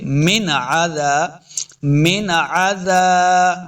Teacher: نون ساکن کے بعد عین حروف خلقی سے ہے تو بغیر غنہ کے پڑھنا ہے ، یعنی غنہ نہیں کرنا، ہم نے پڑھیں گے من عذاب،